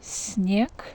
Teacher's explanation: And here is also soft, снег. The letter E goes after N, that's why we need to pronounce soft N here. We can say that soft N has an impact on the S, that's why S also becomes kind of soft sound.